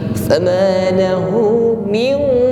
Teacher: dengungnya di sini sudah tebal, karena setelah nun sukun yang dihadapi adalah huruf qaf. Huruf qaf isti'la bunyinya tebal.